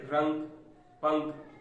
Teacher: इनका उच्चारण करते समय वायु केवल नाक से निकलती है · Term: अनुस्वार